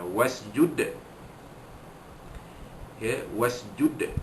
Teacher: dal mati di ujung kalimah, maka dibunyikan qalqalah kubra